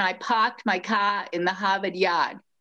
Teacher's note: leaves out the letter r to a degree it turns it into an ah kind of a sound